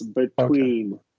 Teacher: Yeah, this is the first syllable. T starts the second syllable, which is why it's released.